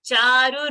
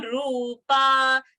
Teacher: So Charu, they're cutting that Rasva sound. Rupa, Ru, we are holding longer. · So Charu's Ru is a Rasva Ukara and Rupa's Ru is a Dirgha Ukara.